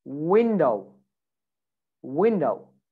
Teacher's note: it's not a v it's a w and the sound is different with a v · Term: the w sound